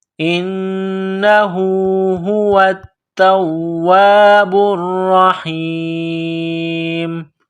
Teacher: ہوا التواب را، ح یا زیر حی، میم پیش مو، ہوا التواب الرحیم، ہوا التواب الرحیم۔ جب اس آیت پر رکیں گے، سٹاپ کریں گے تو میم کو سائلنٹ کریں گے